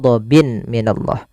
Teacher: bertemu mim tanwinnya dimasukkan itu yang kita namakan dengan Idam buna disertai dengan gunah masuk ke rongga hidung kita sambil ditahan dua harakat